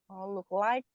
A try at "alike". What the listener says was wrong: Look alike, jadi ada e-nya. look like. Look alike, ya artinya mirip.